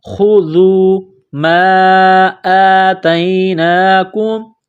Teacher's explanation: خوا کو موٹا کرنا ہے، ذال کو باریک کرنا ہے، خذوا ما آتیناکم، میم الف مد زبر ما، یہ مد ہے، اس کو تھوڑا سا کھینچیں گے۔